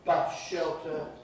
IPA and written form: ˈbʌʃ ˌʃeltə (bus-shelter)